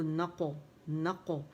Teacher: یہاں قلقلہ ہوگا موٹا والا. نق آ کی آواز نہیں آئے گی کیونکہ یہ حمزہ نہیں ہے, عین کی آواز ہے, عین ادا کریں گے نق آ, ٹھیک ہے.